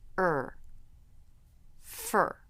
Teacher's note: for the r sound the middle of the tongue shifts back and up a little er fur so the tip of the tongue isn't touching anything